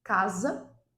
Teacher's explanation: a palavra casa, ela é grafada com S, mas o som é de Z